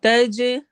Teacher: جیم پہ ہم نے قلقلہ کرنا ہے، ہلانا ہے